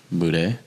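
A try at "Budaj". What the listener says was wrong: No, the J is silent and the A is actually an I.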